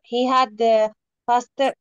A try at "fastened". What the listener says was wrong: T is silent. Ignore T. In English, there are sometimes some letters that are silent, and this T is silent. Fastened. Fastened, okay?